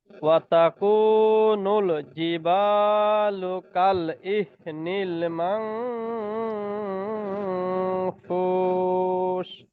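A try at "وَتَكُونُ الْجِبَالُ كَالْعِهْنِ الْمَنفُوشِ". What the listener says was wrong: হার বাতাসটা একটু বের হবে। কাল আইহ নীল মাংফুস।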